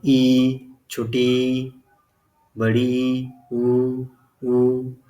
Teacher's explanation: संवृत स्वर, जिसके उच्चारण में मुख कम खुलता है, यानी कि जिसमें मुख लगभग बंद होता है